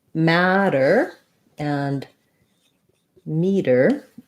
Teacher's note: Otherwise, the words are pronounced exactly the same. They both have a flap, so it sounds a little bit like a D.